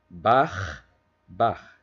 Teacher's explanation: En outre, et plus significatif encore, on a constaté que le R rhotique en position finale est souvent prononcé de façon similaire au phonème allemand ch. Ainsi, le mot allemand Bach ne diffère du mot bar que par la longueur du son consonantique final